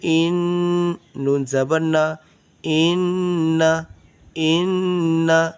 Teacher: یہ نون ہے اور نون پہ کیا کریں گے؟ غنہ کریں گے۔